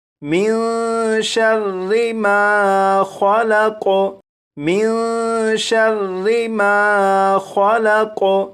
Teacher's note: جب نون ساکن کے بعد شین ہے تو اس نون ساکن میں اخفاء کے قاعدے کے مطابق غنہ کر کے پڑھیں گے